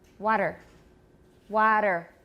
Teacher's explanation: a T between two vowels, which sounds like a very short D. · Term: tap